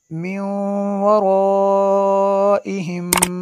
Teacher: نون ساکن کے بعد واو ہے حروف یرملون میں سے، تو یہاں پہ غنہ ہوگا